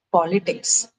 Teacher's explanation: For politics, the stress is on the first syllable.